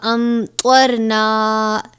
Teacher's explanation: یہاں پہ میم ساکن کے بعد حرف طا آیا ہے، یہاں پر اظہار شفوی ہوگا یعنی غنہ نہیں کریں گے